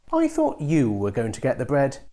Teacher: the bread has already been mentioned so it's old information and you pronounce it with a rising tone · the word you gets a falling tone because this is the new idea in the sentence